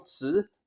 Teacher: It would become tsiX in Middle Chinese, so with a rising tone